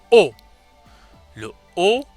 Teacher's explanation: qui est une voyelle semi-fermée, mais à timbre sombre.